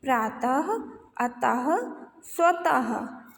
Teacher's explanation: फिर ये है विसर्ग, इसका उच्चारण हा के समान होता है।